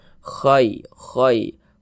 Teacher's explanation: huruf ya sukunnya adalah huruf Lin begitu kita baca Luna lembut hati-hati ketika mengucapkan huruf Lin yang terjadi pada huruf Ya Sukun jangan sampai condong ke huruf e jangan nih baca kai kai jangan lembut saja lunak saja kai